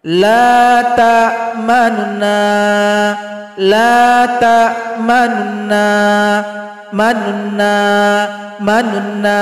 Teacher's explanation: jadi bunyi NU itu timbul setengah harakat saja jadi singkat bunyinya laun launna jadi jangan cepat ketika baca Ma launa itu salah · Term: raum